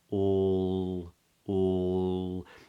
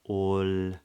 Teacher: just back from from the from the top teeth but then the back of the tongue is also raised so the sound is more in the back of the mouth